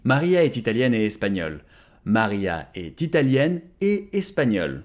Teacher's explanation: if you want to sound proper French, you have to make the first liaison, but not the second one though, even though both words end with a T.